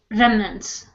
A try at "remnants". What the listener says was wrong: Okay, good.